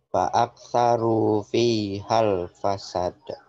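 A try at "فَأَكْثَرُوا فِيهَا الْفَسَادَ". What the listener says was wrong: Nah, ini ada matnya nih. Fasad. Ini nggak boleh dikasih mat. Ada huruf mat, tapi dia tidak menjadi mat karena nyambel yang sukun di sini nih. Fi hal, nggak boleh dibaca fi hal. Di mat dulu baru disambar, nggak boleh. Fi hal, fasalah ya.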